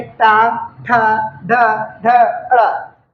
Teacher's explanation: जब जीभ का आकार डमरू के आकार का हो, जीभ का भाग डमरू के आकार का हो, वे वर्ण हमारे मूर्धन्य कहलाते हैं। जैसे टा, ठा, ढ, ढ, ड़।